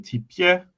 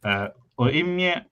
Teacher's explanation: consonants are often palatalized after E, as in tipie, which means he, and in oimie, which means dogs.